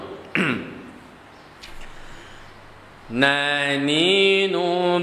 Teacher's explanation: Huruf nun memiliki ciri khas yaitu di gunnah, sifatnya akan terdengar jelas ketika gunnah dan bainiyah, yaitu tidak kuat dan tidak juga rakhawah.